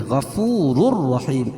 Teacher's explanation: تنوین کے بعد ادغام بلا غنہ کے 2 حرفوں میں سے را ہے یہاں بھی ادغام کریں گے لیکن غنہ نہیں کریں گے